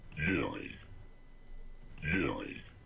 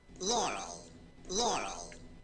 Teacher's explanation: heard Yanny more consistently when the pitch was lower and laurel when the pitch was higher